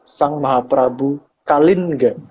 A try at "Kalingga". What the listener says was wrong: Jadi dipisah. Ya, Kalin sama Ga-nya dipisah. Karena itu pengucapan dalam Sanskerta harusnya seperti itu. Cuman di zaman Jawa yang sekarang itu, huruf N di belakang itu kadang-kadang menjadi NG. Jadi jadi kadang-kadang diucapkan menjadi Kalingga. Tapi sebenarnya bukan.